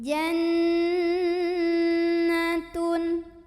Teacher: Jena tune nunya ghunnah musyaddadah karena Nun bertasydid maka cara membunyikannya huruf nun ini didengungkan ditahan kurang lebih dua harokat jadi bunyi n-nya itu ditahan dulu sampai ada getaran ke hidung